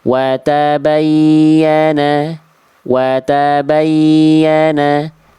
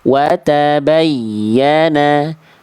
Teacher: Penekanan yang lebih kuat pada huruf ya ketika bertasydid. Sehingga suara bacaan ya bertasydidnya itu terdengar lebih meninggi dibanding sekitarnya. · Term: nabr